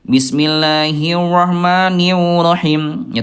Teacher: huruf r-nya hilang ya. Kadang suka berubah jadi wau.